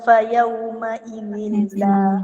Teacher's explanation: Kalau ayat 25 ni idgham bila gunnah fa yauma idzin la. Dia masuk ke huruf lam tanpa dengung.